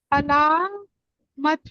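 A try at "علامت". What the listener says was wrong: हाँ, अलामत ठीक है, good, हाँ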